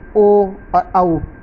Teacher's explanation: जिन वर्णों का उच्चारण कंठ तथा ओष्ठ से होता है उनको कंठोष्ठ्य वर्ण कहते हैं